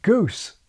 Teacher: part of the southern British ANTI clockwise shift was so called GOOSE fronting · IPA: gʉws